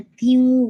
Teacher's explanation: پہلے آپ نے تی کی کسرہ اور پھر آپ نے نیزل ایڈ کرنا ہے